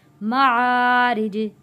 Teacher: आ रॉ बारीक पढ़ी जाएगी, रॉ के नीचे ज़ेर है री, और जीम को जब हम वफ़ करेंगे तो जीम का ज़ेर ख़त्म हो जाएगा तो इसकी जगह जज़म आ जाएगा। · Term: कलकला